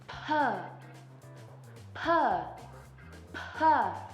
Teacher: Es decir, que lo que nosotros estamos haciendo es por un momento frenamos la salida de aire antes de pronunciar para que al momento de que salga de nosotros salga como una explosión de aire